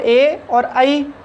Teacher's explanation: ए और आई कंठ से ध्वनि निकलती है, लेकिन जो हमारी जिह्वा है वो तालु को भी स्पर्श करती है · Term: कंठ तालु